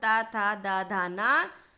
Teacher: ये हमारी जीभ यानी जिह्वा इन वर्णों के उच्चारण में दंत को स्पर्श करती है, इसलिए ये दंत व्यंजन कहे जाते हैं।